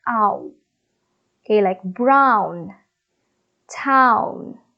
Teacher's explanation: when we pronounce the word Brown our mouth is opening widely but as we pronounce the last sound produced it is becoming more tense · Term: diphthong